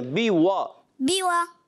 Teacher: واو جو ہوتا ہے ہونٹوں کی گولائی سے ادا ہوتا ہے